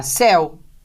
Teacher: Tem o ditongo de som aberto, você acentua.